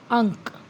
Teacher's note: यानी नाक इसका जो उच्चारण है नासिका और मुख से बाहर आता है। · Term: अनुस्वार